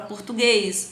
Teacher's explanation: oxítona a sílaba tônica é a última